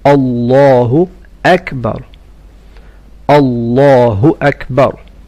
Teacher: in أكبر say the ألف clearly and not a واو